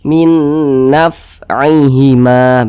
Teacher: huruf fa ini juga salah satu huruf yang memiliki sifat hamas. Ketika kita mengucapkannya ada nafas yang kita alirkan.